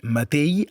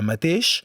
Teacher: El català septentrional té un tret fonètic encara vigent, emmudeix la X final. És per això que encara podem sentir matell en lloc de mateix, o pell en lloc de peix, i calai en lloc de calaix.